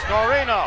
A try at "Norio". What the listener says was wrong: And you said Norino when there was clearly no N before the Y or the last O.